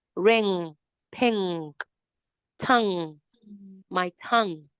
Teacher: Now it's coming out from your nose instead of coming out from your throat. It's coming out from your nose. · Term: nasal sound